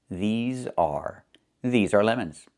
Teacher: Make sure you make the long e sound like green beans. These plus the z sound like in zebra and zipper z with a voice.